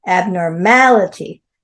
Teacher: Abnormality, 5 syllables. Abnormality, stress on the MA.